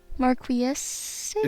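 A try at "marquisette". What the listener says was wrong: No, it's not estate. There's not an estate.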